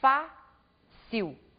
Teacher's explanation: Observem que a sílaba mais forte é a penúltima sílaba da palavra. Portanto, temos aqui um outro exemplo de palavra paroxítona.